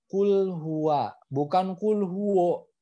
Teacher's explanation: kalau waw fathah otomatis dia harus dibacanya wa